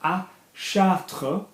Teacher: à Chartres, we don't pronounce the S